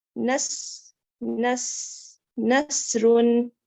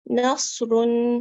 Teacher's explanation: دیکھیں سیٹی بھی آ رہی ہے لیکن تھوڑی سی موٹی ہے. سین سے اور صاد کا ڈفرنس یہی ہے کہ وہ باریک ہے سین، اور صاد جو ہے وہ موٹا ہے